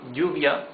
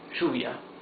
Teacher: In some countries in Latin America, it's pronounced sh.